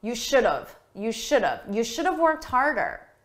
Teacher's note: we take have, which is the grammatically correct choice, but we reduce it. We say it quickly and it sounds like of.